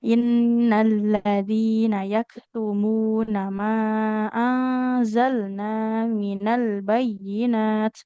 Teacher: Yang pertama huruf kaf sukunnya harus mengalirkan nafas.